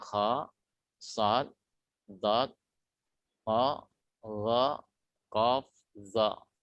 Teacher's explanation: Isti'lah adalah terangkatnya pangkal lidah ke atas langit-langit. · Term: huruf isti'lah